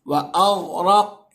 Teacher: غین بھی حروف مستعلیہ میں سے، را کے اوپر زبر ہے اس لیے را کو بھی پر، غین بھی پر، را بھی پر، قاف بھی پر · غین کو بھی منہ بھر کے پڑھیے گا کہ غین حروف مستعلیہ میں سے ہے، اور قاف بھی حروف مستعلیہ ہے، پلس قاف پر قلقلہ بھی ہو رہا ہے کیونکہ قاف حروف قلقلہ میں سے بھی ہے، تو قلقلہ بھی کرنا ہے، منہ بھر کے بھی پڑھنا ہے.